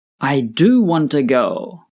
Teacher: We put stress on the word do to emphasize that we really want to go